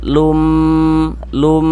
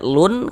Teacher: bagian lum itu suaranya kita tahan, kita panjangkan sejenak ya. Kira-kira sepanjang dua harakat. · bunyi nun sukun atau bunyi tanwinnya itu dimasukkan ke dalam huruf idgham bighunahnya. Nah, kemudian disertai dengan ghunah, didengungkan.